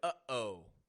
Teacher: When you say uh-oh, You are using your glottis, a muscle in your throat, to stop the sound in the middle. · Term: glottal stop